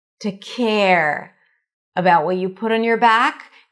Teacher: that lift at the end means that something else is coming up